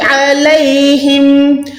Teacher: عین جو ہے حلق کے درمیان سے ادا ہوگا